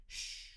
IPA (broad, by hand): ʃ